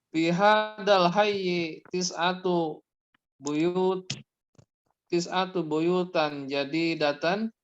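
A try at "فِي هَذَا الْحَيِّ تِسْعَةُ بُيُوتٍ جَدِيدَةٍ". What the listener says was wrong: Kenapa kok jadi fathah? Fi hadzal hayyi tis'atu buyutin jadidatin. Ya ini buyutin jadi datin ya. Ya, buyutin jadi datin.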